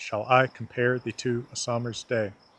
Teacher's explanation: So for example, in iambic pentameter, shall I compare thee to a summer's day, we have 10 syllables, and they regularly alternate between a drop, an unstressed syllable, and a lift, a stressed syllable. We go drop, lift, drop, lift, drop, lift, drop, lift, drop, lift.